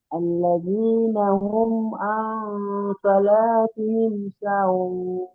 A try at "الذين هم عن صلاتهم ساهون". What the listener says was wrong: সাটা টান হবে, সাহুন। ঠিক আছে, ঠিক আছে।